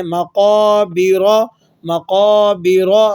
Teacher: را پر زبر ہے تو وقف کی حالت میں را موٹا پڑھا جائے گا